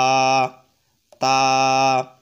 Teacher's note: তা উচ্চারণ হবে জিহ্বার আগা উপরে দুই দাঁতের দুই দাঁতের ঘোড়ার সঙ্গে লেগে